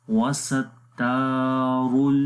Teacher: را کو موٹا پڑھیں گے، را کے اوپر پیش ہے